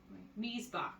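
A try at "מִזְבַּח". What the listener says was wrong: No. You don't stop there because that doesn't have a shawah. So you give every sound it's due. Mizebach.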